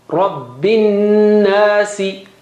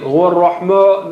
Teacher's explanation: Ra is thick, but ma is not thick.